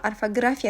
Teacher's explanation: Orfoqrafiya sözü orfoqrafiya kimi tələffüz olunur. Yəni o saitləri keçir A-ya və qalın, açıq, dodaqlanmayan dörd dənə sayt iştirak eləyir